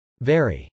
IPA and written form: vˈɛri (very)